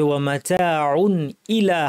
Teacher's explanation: তানবির পরে হামজা এসেছে, কণ্ঠনালীর হরফ, কাজেই গুন্নাকে না বাড়িয়ে ইজহার করে পড়তে হবে। ওয়া মাতাউন ইলা, হামজা যেন শক্ত হয়।